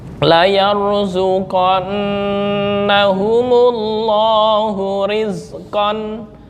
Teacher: semua Allah walaupun nggak ada harokat berdiri di Quran ini dibaca panjang 1 alif